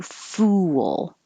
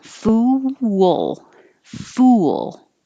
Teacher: you round your lips, and because you make them rounded for the oo, then you unround them for the L, it makes almost a W